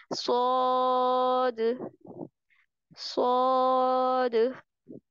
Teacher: जुबान की नोक को सामने वाले नीचे के जो दांत हैं उनके किनारों से लगाकर, मजबूती से किनारों से लगाकर मोटी आवाज में पढ़ेंगे।